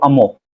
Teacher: e deixa de pronunciar o r